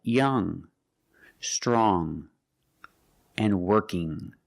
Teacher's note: When you see ng at the end of a word, it makes a nasal sound. It makes a sound in your nose like this. There's no g sound.